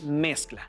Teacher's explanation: mezcla su sílaba tónica es mes